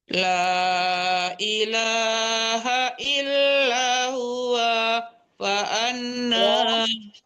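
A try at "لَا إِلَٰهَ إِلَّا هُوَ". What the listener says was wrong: Wanya tidak panjang, jangan ditahan. Huwa fa'an. Bu, la-nya panjang, Bu. Wanya yang tidak panjang ya. La ilaha illa huwa fa anna tufakun.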